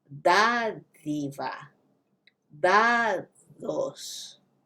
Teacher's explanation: You have the D sound at the beginning, and then you have that slight TH sound when you say the D syllable.